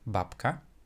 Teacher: the voiced b will change to the unvoiced p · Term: assimilation